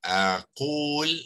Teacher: So, menjadi kalimah, ya, aqul dengan ada waw ni, waw mad ni panjang, ya, memanjangkan baris qaf